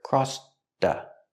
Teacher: We hear the T in crossed linked to the next word. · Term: stop T